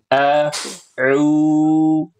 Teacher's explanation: ketika baca auzu a a itu harus hamzah a. Jangan sampai bacanya kayak ain.